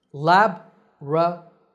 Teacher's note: That's the American pronunciation. Lab-ra-to-ry, with the stress on the first syllable, laboratory.